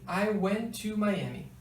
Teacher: A letra T do went também é cortada, e só fica o to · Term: connected speech